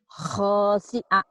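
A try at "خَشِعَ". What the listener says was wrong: Pendek. Nggak ada yang panjang. Khosyi'a. Khosyi'a. Nggak ada yang panjang ya.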